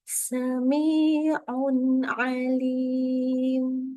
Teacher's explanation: Kalau ada nun sukun atau tanwin yang ketemu dengan huruf ain, ya, ini kita baca nun sukunnya dengan jelas. Ya, nun sukunnya dibaca dengan jelas tanpa tambahan dengung.